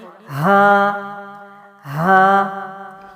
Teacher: حلق کے نیچے والے حصے سے باریک آواز، حلق کا یہ آپ کے منہ کے اندر کا سارا حصہ ہے، اور جو آواز سینے کی جانب ہے یعنی حلق سے نیچے کیا ہے، سینہ ہے، اس جانب سے آواز ہے، اور یہ آواز تھوڑی وزنی ہے، اور آواز کیا ہوگی، ہا ہا، یہ ہے آواز۔